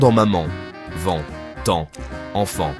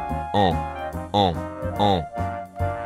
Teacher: Pour le faire, ouvrez la bouche légèrement et tirez-la comme un sourire discret dit en en laissant passer un peu d'air par le nez. La langue est détendue, l'air circule au-dessus, le voile du palais s'abaisse. C'est la nasalisation.